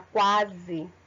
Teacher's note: Quase a gente não escuta o U, tá? A gente escuta mais a letra A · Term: semivogal